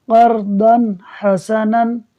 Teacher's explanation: اب دیکھیے ضاد پر دو زبر کی تنوین ہے، اس تنوین کے بعد دیکھیے حا آ رہا ہے، تو یہ حا حروف ہلکی میں سے ہے، لہٰذا یہاں اظہار ہوگا، یعنی اس تنوین میں غنہ نہیں کریں گے، تو ہم اس کو پڑھیں گے قرضاً حسناً بغیر غنہ کیے، یعنی نون پڑھیں گے